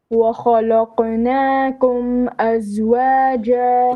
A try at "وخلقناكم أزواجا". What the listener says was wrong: Okay, lam is flat. وخلا. Not خلا. وخلا. And then قاف is heavy. وخلقناكم أزواجا. Okay, there's a bit of an issue with your flat letters and heavy letters. وخ. First خ is heavy. وخلا. وخلق. وخلقناكم أزواجا.